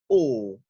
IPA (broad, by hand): ɔ: